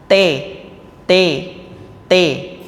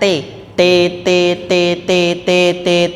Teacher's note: Nah, kalau tabbat itu lidahnya sudah turun, tidak di tempat makhrajnya huruf ta, yaitu ujung lidah pada langit-langit bagian atas